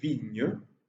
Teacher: Cette proximité favorise l'affaiblissement d'une des deux voyelles, notamment le « et » qui perd son statut vocalique et assume un statut intermédiaire entre une voyelle et une consonne qui s'appelle iode. Donc, aujourd'hui, on dit vigne, deux syllabes, parce que justement, une des syllabes en hiatus, une des voyelles en hiatus, c'est affaibli.